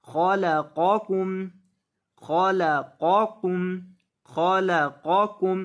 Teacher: खलक़कुम, अक्सर लोग इसे पढ़ देते हैं खालाकुम, खालाकुम नहीं, खलक़कुम। खौ को और कौफ को, इन दोनों को अच्छे से मोटा करके पढ़ेंगे